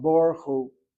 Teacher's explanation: In fact, I read the kamatz as an or sound, Baruch Hu.